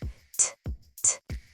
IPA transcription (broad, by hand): t